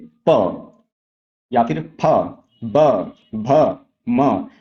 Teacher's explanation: इन सभी वर्णों का जब आप उच्चारण करेंगे तो अगर आप ध्यान से ऑब्जर्व करेंगे तो ये जो प, फ, ब, देखिए जब हम ये वर्ण बोल रहे हैं तो आपके जो दोनों होंठ हैं ऊपर और नीचे वाले वे एक दूसरे को स्पर्श कर रहे हैं। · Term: ओष्ठ